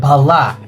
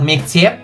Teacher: the vowels in the first word are back vowels, while in the second they are front vowels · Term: vowel harmony